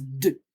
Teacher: You don't want to have that schwa at the end.